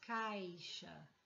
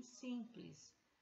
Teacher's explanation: E temos também as semivogais, que é o U e o I, no caso da formação de ditongos, caixa. Esse I em caixa não tem a mesma força que o I em simples.